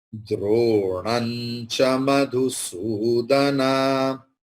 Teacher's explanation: So anuswara will take the pronunciation of nya.